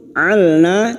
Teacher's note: lam sukun alna jangan sampai memantul atau dalam bahasa istilahnya tajwid disebut tawalud memantulkan huruf ijaiah selain